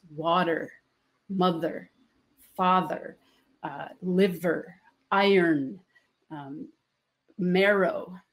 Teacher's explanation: all the oldest basic elemental words of the language have first syllable stress